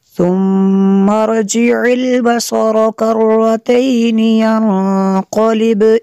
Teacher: ینقلب یہاں پہ نون ساکن ہے اور اس کے بعد قاف حروف اخفاء میں سے ہے، تو یہاں پہ اخفاء ہوگا، اس لیے غنہ کیا، قاف پہ قلقلہ ہوگا۔